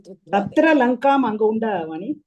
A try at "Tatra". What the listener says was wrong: Tatra. There is Dvitva there. Tatra.